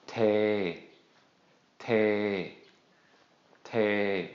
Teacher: When we put these two together, low plus long vowel equals long midtone. So we're going to say this as te, te, te.